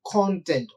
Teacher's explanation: if you stress the first syllable it functions as a noun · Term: word stress